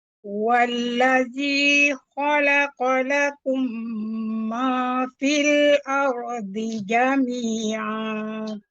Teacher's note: Ma fil, dia agak terbuka, fathah dia agak tebal.